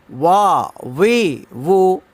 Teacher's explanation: ওয়াওর উচ্চারণ হবে দুই ঠোঁট গোল করিয়া মুখ খোলা রেখে ওয়াও উচ্চারিত হয়